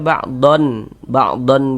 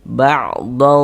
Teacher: Jangan dibaca ba'don ba'don begitu berbunyi n jelas begitu jangan. Nah, tapi di disamarkan ba'd seperti itu. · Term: dibaca samar